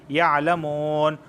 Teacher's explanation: اور یعلمون کو واو مدہ کی وجہ سے کھینچ رہے ہیں